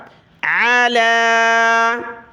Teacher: آیت نمبر 4، علی، عین زبر ع، لام کھڑا زبر لا، علی، لام کے اوپر کھڑا زبر ہے تو ایک الف کی مقدار کھینچا، عین کو گلے سے نکالا